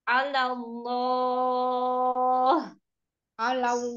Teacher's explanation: Cuman mau Allah-Allahnya ditambah panjangnya jadi 4 harokat.